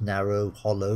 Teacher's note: The second syllable seems to be a bit weaker